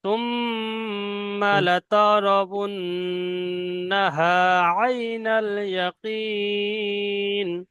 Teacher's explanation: নুন তাসদিদ এবং মিম তাসদিদ গুন্না ওয়াজিব, ওই দুটো গুন্না করতে হবে, তাছাড়া অন্য কোথাও নয়।